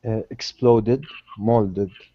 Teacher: the ed ending added to verbs that end in a T or a D sound are pronounced as the syllable ed, ed, or id.